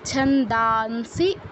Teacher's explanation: অনুস্বার পর আছে দন্তস তো দন্তস এর অনুনাসিক্য বর্ণ হচ্ছে দন্তন্য অনুস্বারের স্থলে আমরা দন্তন্য হসন্তর মত উচ্চারণ করব